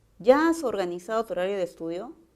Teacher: esa es una pregunta y sé que su tono tiene que ser ascendente